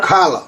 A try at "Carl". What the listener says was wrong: Carl. Not Carla, just Carl. Carl.